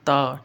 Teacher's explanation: आप ता बोलोगे तो आप देखोगे ना कि आपकी जीभ जो है ना दांत के साथ टकरा रही